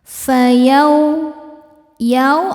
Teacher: sebab ada wau sukun sebelumnya berharakat fathah cara bacanya dilembutkan atau dilunakan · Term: harfulin